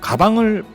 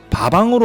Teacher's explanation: 비읍은 양순음이고 파열음이죠. 양순음화 그리고 파열음화입니다. 그리고 더불어 동화도 보이죠.